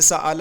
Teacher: حمزہ کو اس کے اپنے مخرج اور الف کے مخرج کے درمیان پڑھنا